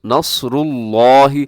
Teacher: صاد کو موٹا کرنا ہے، اپنی طرف سے پورا زور لگا دینا ہے. کم سے کم سین نہ ہو اور 19-20 کا جیسے کہا جاتا ہے 19-20 کا فرق ہو جائے، تھوڑا سا موٹا ہو جائے.